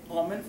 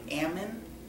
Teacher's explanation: they have an almond but they say Ammon instead of Al